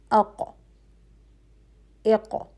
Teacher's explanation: آواز جو ہے وہ فوراً رک رہی ہے، مضبوطی کے ساتھ اور قوت کے ساتھ رک کر بند ہو رہی ہے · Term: شدہ کی کوالٹی